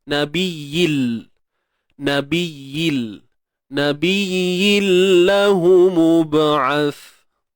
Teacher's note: tanwin bertemu lam idgham, berlakulah masukkan sebutan bunyi ya tu masuk dalam lam.